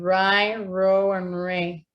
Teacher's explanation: a little line here to talk about the retroflex it's like it's my tongue curling back ER towards the alveolar Ridge but it doesn't touch it so it stays in this kind of in between region between · my tongue curling back towards the alveolar ridge, but it doesn't touch it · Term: retroflex R